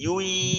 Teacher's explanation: ওয়াও হা জবর ওয়াহ, ইয়ায়ে দুই পেশ তানবিন, তারপরে আবার ইয়া আসছে, তো ইয়া ঈদগামে বাগুন্নার হরফ, গুন্নার সহিত তানবিনটাকে মিলিয়ে পড়তে হবে ইয়ার সাথে। ইয়া ইয়া দুই পেশ ইউই, গুন্নার সহিত মিলিয়ে পড়লাম, এক আলিফ পরিমাণ গুন্না করলাম।